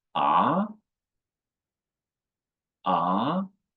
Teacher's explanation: The second tone is rising.